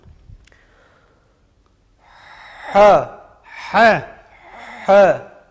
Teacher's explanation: Müstefildir, ince okunur. Münfetihtir, ağzı açarak okunur. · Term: Ha harfinin